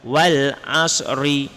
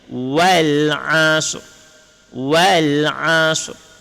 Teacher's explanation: Shad as bukan wal 'asr berhenti dekat shad tapi ada ra. Dan ra itu hanya ada setengah harkat. Bukan satu harkat